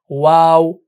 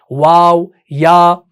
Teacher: زبان کہیں نہیں لگ رہی، دانت کہیں نہیں لگ رہے، یعنی ان کا مخرج جو ہے نا وہ منہ کے اندر کی خلا سے ہے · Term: حروف مدہ, حروف ہوائیہ